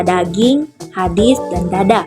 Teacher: triival selanjutnya fonem D fonem ini mempunyai dua macam realisasi yaitu pertama direalisasikan sebagai bunyi D apabila berposisi sebagai onset pada sebuah silabel